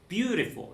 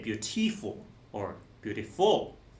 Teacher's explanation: it's like the emphasis on the first syllable